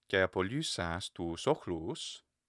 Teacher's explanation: And you hear my climbing back up. It's not loud, but the pitch is rising at the end.